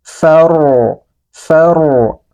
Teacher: Nah, ini huruf ro kita baca tebal. Kita angkat pangkal lidahnya sehingga terdengar tebal.